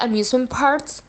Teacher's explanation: when she says Parks it sounds like she's saying Parts with a t instead of a k I'm not sure if she's actually saying a t but that's